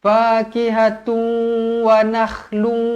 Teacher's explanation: kita kena muncungkan mulut sebab kita masukkan ke dalam huruf wau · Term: Idam maalunah